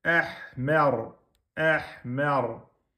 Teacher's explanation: Ra, soukoun, précédé d'une fatha. Du coup, le ra est emphatique.